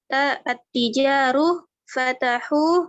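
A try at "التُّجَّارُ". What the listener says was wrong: Bukan at-tijaru di situ. At-tujaru.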